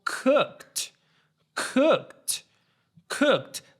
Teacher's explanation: the k doesn't have a voice in this case so it doesn't produce a vibration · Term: t sound